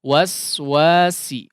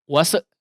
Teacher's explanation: hamesnya harus dikeluarkan dengan tipis, tajam, kemudian tidak dipotong ya. Biarkan udaranya habis di tengah. Waswasi, jangan wase ya, kasarannya begitu. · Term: sin